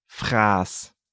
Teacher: could you hear how long the vowel sound a was